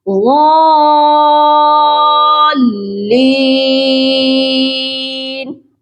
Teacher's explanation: اس word میں بھی بہت سے لوگ یہی مسٹیک کرتے ہیں کہ مد کو پورا کرتے ہیں تو لام مشدد کو نرم پڑھ دیتے ہیں غال. تو لام کو سختی سے پڑھنا ہے اور مد کی مقدار کو بھی پورا کرنا ہے